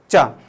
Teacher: ऊपर जीवान तुम्हारी टकराएगी गुंबद पे और फिर वापस नीचे आएगी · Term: स्पर्श संघर्षी ध्वनियां